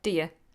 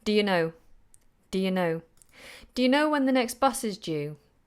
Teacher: Now normally when we have a question starting with do you, if it's a longer question, then do you tends to be a little weaker.